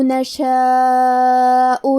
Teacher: کلمت نشاء میں مد واجب متصل ہے، تو ہم اپنی آواز 4 مد کے برابر لمبی کریں گے